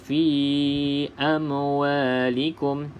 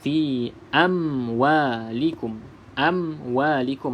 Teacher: Macam mana kita nak pastikan tidak ada lantunan? Kena pastikan bibir atas bibir bawah kita rapat betul-betul sehinggalah selesai kita sebut huruf mim, kemudian baru kita sebut huruf waw, baru tidak ada lantunan.